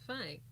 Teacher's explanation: I still feel myself talking with my nose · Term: the nasal sound